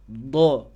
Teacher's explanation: nah silakan Antum tempelkan ujung lidahnya ke gusi gigi seri atas Jadi pas pengucapan huruf Dod ujung lidahnya antum tempel ke gusi gigi seri atas terlebih dahulu